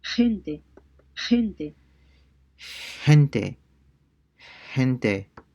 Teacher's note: if G comes before E or I, it sounds like the H in the word hot, except that it's raspier